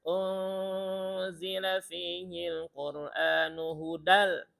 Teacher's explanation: Ikhfa nun ketemu zai. Tahan dua ketukan.